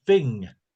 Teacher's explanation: The thing that people always notice with Cockney and with other varieties from roundabout there is that H isn't pronounced and um th becomes f.